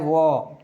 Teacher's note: दंत और ओष्ठ्य से यानी दोनों अंगों से जिसका उच्चारण स्थान हो रहा है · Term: दंतोष्ठ्य